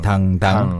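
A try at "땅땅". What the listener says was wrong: instead of the D sound it's not just a regular soft D it's a bit stronger actually yeah more like th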